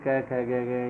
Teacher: जैसे क की इसमें एक जैसे दिखने वाले वर्ण तो नहीं होते, लेकिन एक ही स्थान से उच्चारित होने, जैसे क आ गया, क के बाद में अगर ग आया है या घ आया है तो भी वह आवर्ती मानी जाती है, क्योंकि क वर्ग का उच्चारण स्थान कंठ है, तो सारे क ख ग ये सारे वर्ण एक जैसे होंगे।